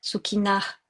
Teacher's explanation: il y a un H avec un point dessous, c'est le visarga, ça s'appelle. On va doubler la voyelle. Sukhina, en expirant avec un H.